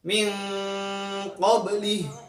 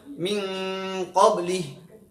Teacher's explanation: Jadi harus dibaca samar-samar nun sukun, persiapan untuk membaca huruf qaf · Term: ikhfa